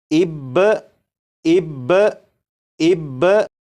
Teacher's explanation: با کو پڑھنے کے بعد آواز کو ختم نہیں کریں گے بلکہ آواز کو تھوڑی دیر کے لیے روکیں گے۔ آواز کو تھوڑی دیر کے لیے روکنے کے بعد جب آپ با کو پڑھیں گے تو یہ بالکل صحیح پڑھا جائے گا، جیسے اب اب اب۔